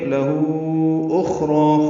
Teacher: خا ساکن پہ ہمس ہے، یہ پر ہے، را پر ہے، را کو دو حرکات لمبا کریں گے، وقفاً دو حرکات ہی لمبا ہوگا.